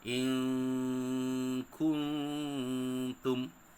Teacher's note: Patutnya bunyinya in kuntum. Tapi kerana dia adalah hukum ikhfa hakiki, maka disamarkan bunyi nun tu. · Jadi cara bunyinya ialah bunyi nun dibaca secara samar seantara izhar dengan idgham serta dengung.